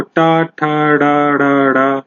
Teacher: जब आपकी जीवा जो है थोड़ी सी मुड़ जाए, उसे बोलते हैं मूर्धन्य वर्ण